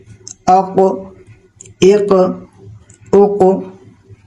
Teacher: جب یہ ساکن ہو تو اس کی آواز گونج کر واپس آتی ہے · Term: حروف قلقلہ